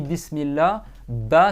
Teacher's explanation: c'est 2 lèvres qui s'entrechoquent